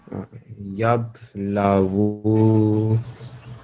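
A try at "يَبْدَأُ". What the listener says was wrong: You have pronounced the waw, haven't you? But you just said that you pronounced the Hamza. And this one, I know it looks a bit like a lam. It's actually supposed to be a dal.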